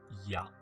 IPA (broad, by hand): ja